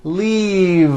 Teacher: an unvoiced F the word is leave with a voiced V keep the voice in going throughout the whole word and voice the V